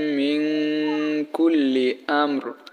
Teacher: আর এখানে দেখেন নুন সাকিনের পরে কাপ আসে, সো আমি বললাম যে ইকফার হরফ 15টি বললাম, সো 15টি হরফের মধ্যে কাপ আসে, ঠিক আছে। তো নুন সাকিনের পরে কাফ থাকার কারণে নুন সাকিন কি হবে, গুন্নাহ করে পড়তে হবে